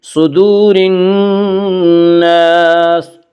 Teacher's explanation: نون مشدد غنہ ہوگا، غنہ کی مقدار ایک الف ہے